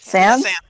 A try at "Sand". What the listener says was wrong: No, Sand. Sand. A singular grain of sand.